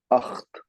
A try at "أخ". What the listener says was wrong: لا بدون تاء. أخ فقط. أخ.